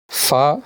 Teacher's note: ऊपर के दांतों के किनारे और निचले होठों के तर हिस्से से अदा होता है